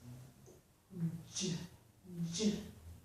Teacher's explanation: we start with d, a little bit of a d sound, and move into the j sound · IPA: / dʒ /